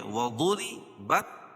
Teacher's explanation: وضرب را باریک ہوگی، ضاد کو پر پڑھیں گے